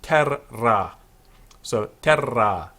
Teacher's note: Notice that the terra is a two-syllable word. English people, you see a double R, you pronounce it once. The Romans, two R's are sounded.